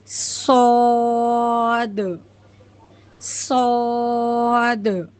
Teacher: اسی طرح صاد، اب دیکھیے زا اور سین یہ تو باریک حرف ہے، کیونکہ ہم نے حرف مفخم ایسے حرف کو سیکھ لیا ہے جو ہمیشہ موٹے پڑے جاتے ہیں، تو صاد وہی حرف ہے، یعنی ہمیں صاد کو موٹا پڑھنا ہے، یعنی منہ کو گول کر کے۔ صاد سیم سین کی طرح ہوگا، بس سیٹی نکلنے کے بعد آپ کو منہ کو گول کرنا ہے۔